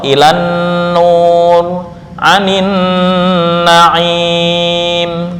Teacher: Idgham lam syamsiyah ke dalam nun secara ijma atau kesepakatan para ulama.